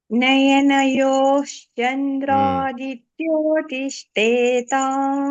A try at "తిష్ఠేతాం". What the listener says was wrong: ఇంకా కూడా తిష్ఠేతాంలో షా మహాప్రాణం ఉంది, ఠా కూడా మహాప్రాణం. తిష్ షా చాలా స్ట్రెస్ చేయాలి. తిష్ఠేతా తిష్ఠేతా తిష్ఠేతాం.